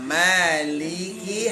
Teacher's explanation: huruf lam dari ujung Sisi lidah ya bertemu dengan gusi atas